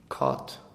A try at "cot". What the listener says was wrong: Again, yours is sounding slightly American. In English, it's a pure cot. But Americans may say more like cart. Which is a mix. But in English, cot.